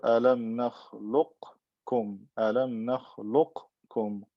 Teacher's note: Right, so idgham saghir, alam nakhluqkum, alam nakhluqkum. Qaf is meeting kaf. What happens? It gets merged into the kaf because it's similar to it